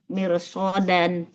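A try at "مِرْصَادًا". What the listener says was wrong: Soalnya panjang. Mirsodan.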